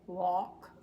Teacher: the L doesn't come through very well